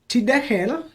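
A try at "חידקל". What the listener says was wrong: And actually this is a chet, but your pronunciation was good and your accent was very good. Chidekel. Chidekel. My chidekel.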